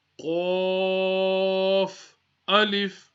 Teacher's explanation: qaf is a musta'liya letter, so we need to read it from the top of the throat